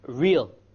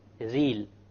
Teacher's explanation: The English R comes from the middle of the tongue and the Arabic comes from the tip of the tongue. It is very important that when we pronounce the R in Arabic, the ra in Arabic, we do not roll the tongue.